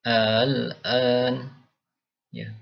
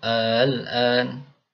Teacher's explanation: Lafaz al-an ini dibaca antara hamzah dan alif, yaitu a yang pertama ini ya. Al-an ya. Jadi ada seperti tekanan ya. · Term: tashil